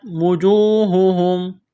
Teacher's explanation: واو مدہ ہے، ایک الف کے برابر کھینچنا ہے